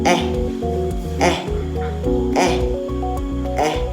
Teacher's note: ang letrang e naman ay binibigkas sa likod na gitna